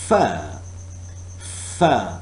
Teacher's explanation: air is forced through the upper teeth a lower lip